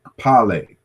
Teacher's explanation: Well, this is a labial velar itself, but this is a simultaneous articulation of K and P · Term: the KP sound